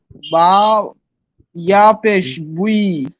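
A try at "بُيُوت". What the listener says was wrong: ইয়া পেশ, আবার বলেন, বা ইয়া, কোনটা এই পেশটা কোথায়, ইয়ার উপরে না বার উপরে? বারোর পেশ কয়টা? হ্যাঁ, কিন্তু দুই পেশ কিন্তু আর বলেন নাই, আবার বলেন। বা ইয়া দুই পেশ।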